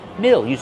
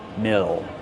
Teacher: use the short I sound like this is. Mill. Plus the dark L.